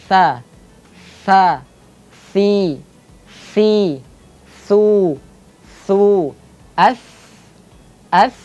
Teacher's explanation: Huruf yang terakhir pada titik ujung lidah bertemu dengan ujung gigi seri yang atas yaitu huruf tha. Pengucapannya tha. Nafasnya keluar. Suaranya juga mengalir dan tha dibaca tipis.